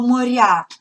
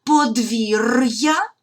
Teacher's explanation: Роздільна вимова р і буква я позначає два звуки й а